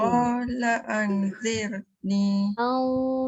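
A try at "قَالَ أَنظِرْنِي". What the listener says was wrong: Tebal dan dia dengung. Kena perbaiki sebab ada bunyi sofir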